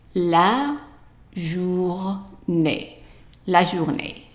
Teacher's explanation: the E with an accent is pronounced A, short A, and the last E here is silent, so I underlined it.